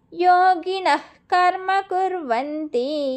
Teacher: యోగినః కర్మ కుర్వంతి. ఇక్కడ కాకముందు వచ్చే విసర్గని ఆఫ్ విసర్గ పలకాలి కాబట్టి హెచ్ సౌండ్ పెట్టుకోండి